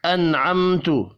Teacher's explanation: نون ساکن کے بعد عین ہے، اظہار حلقی ہوگا، غنہ نہیں ہوگا